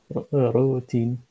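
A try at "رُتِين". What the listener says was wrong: রুতে টান হবে না, রুটিন,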